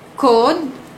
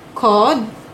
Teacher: kedua-dua perkataan ini adalah berbeza maksudnya jika dibunyikan sebagai vokal belakang separuh sempit dan vokal belakang separuh luas